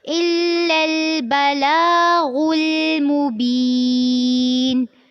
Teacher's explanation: إِلَّا الْبَلَاغُ میں لام کے اوپر کھڑی زبر ہے تو اس کو لمبا کرنا ہے، اور غائن کو پر کرتے ہوئے لام کے ساتھ ملانا ہے، لیکن یہ دھیان رکھنا ہے کہ جب آپ غائن کو لام سے ملا لیں گے تو لام کو پر نہیں کرنا